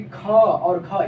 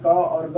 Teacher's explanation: ख घ बोलते समय अधिक हवा भी निकल रही है और अधिक समय भी लग रहा है ना, अधिक मेहनत भी करना पड़ रहा है। इस वजह से इसे हम कहते हैं महाप्राण।